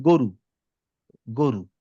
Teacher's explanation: সেটা হচ্ছে আমরা যখন গ বলি, ধরেন বললাম গরু, হ্যাঁ, এই গটা আমরা আসলে কণ্ঠনালীর থেকে মুখের থেকে সাউন্ডটা বেশি বের করি, কণ্ঠনালীতে চাপটা কম দিই।